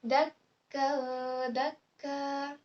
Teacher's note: Ada tanwin bertemu dengan huruf dal. Itu dibaca secara ikhfa, samar-samar.